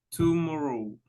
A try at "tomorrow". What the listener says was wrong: No, chu. Trate de poner así la boca, mire. Chu. La primera sílaba es la que tiene que cambiar el sonido, porque lo está haciendo muy redondo.